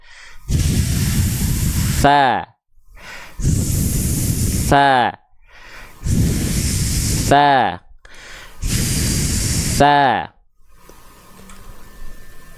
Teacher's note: huruf tsa dia suara dan nafas mengalir karena nafas mengalir di sini enggak akan getar